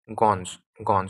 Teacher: সংযুক্ত ব্যঞ্জনে দন্ত্যন্য এর মতো উচ্চারিত হয়